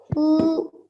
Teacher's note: You prolong the qaf with the dhamma because there is a vowel madhya after it.